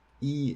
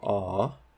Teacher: you can feel the shift from front to back and from high to low